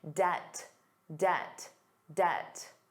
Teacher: Did you notice the B was silent?